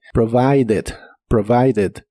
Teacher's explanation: forma del presente pero en el pasado termina con e d en este caso sí se pronuncia como Ed pero con la e muy muy suave